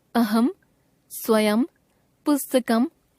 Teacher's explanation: शब्द के अंत में अनुस्वार का उच्चारण हमेशा म के रूप में ही होता है